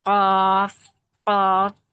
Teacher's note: ٹھیک ہے، اس والے حصے سے چپکتا ہے، تب ہمارا جو ہے خوف صحیح مخرج نکلتا ہے. ٹھیک، تو ہم پورا ماؤتھ بھر کے پڑھتے ہیں خوف، اور ہیوی پڑھتے ہیں، منہ بھر کے پڑھتے ہیں